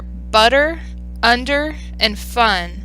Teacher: in these cases the a sound the schwa gets the most emphasis in the word · some stressed words are butter, under, and fun. In these cases, the sound, the schwa, gets the most emphasis in the word. In one-syllable words, such as fun, the schwa vowel is always stressed. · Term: stressed schwa